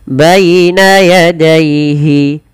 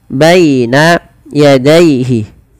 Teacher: Lafal baina dan daihi ini kedua-duanya dibaca dengan bacaan lin. Yaitu dengan melembutkan bunyi suara ya dilembutkan.